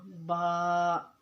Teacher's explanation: با کا مخرج ہے اوپر اور نیچے والے دونوں ہونٹوں کے تہر حصے جب آپس میں ملیں گے تو با ادا ہوگا